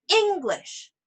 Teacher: each syllable right so for example if we say English then I just emphasize the first syllable